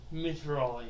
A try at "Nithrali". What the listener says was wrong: Nithrali. Spelled like Mithral, with an I at the end and the M is an N.